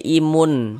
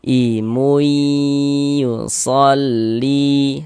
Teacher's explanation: bunyi tanwinnya masukkan ke huruf ya, melebur ke huruf ya, sehingga ini kita baca imui, jangan dibaca imun.